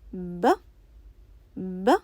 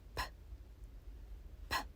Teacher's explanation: They do not sound the same. Cover both your ears with your hands and say B, B. You will notice a sound. Now cover your ears again and say P, P. You will notice that you do not hear a sound.